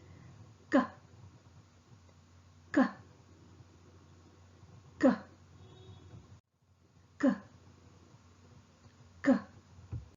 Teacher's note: The K sound is articulated with the back of the tongue making firm contact with the soft palate. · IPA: /k/